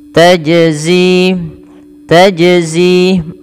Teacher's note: menandakan huruf Jim ini dibaca dengan memantul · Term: qolqalah